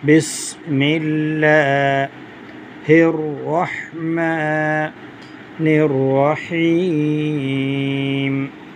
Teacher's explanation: سین میں سیٹی کی آواز آئے گی۔